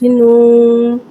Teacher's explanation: واو مدہ کو ایک الف یعنی 2 حرکات کے برابر کھینچ کے پڑھیں گے اور پیش ہونٹوں کی گلائے کے ساتھ ادا کر کے پڑھیں گے۔